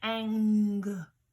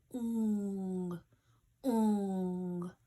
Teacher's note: the back of my tongue is at the top at the roof of my mouth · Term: welded sound